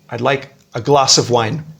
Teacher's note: You notice there there's only stress on two words, glass and wine.